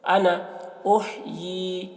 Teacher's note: تو قال انا احیی، یعنی الف کو نہیں پڑھیں گے تو کھینچیں گے نہیں، انا ایسے بولیں، انا احیی، ہا کو حلق سے ادا کریں گے اور یا کے نیچے کھڑا زیر ہے تو اسے کھینچ کے پڑھیں گے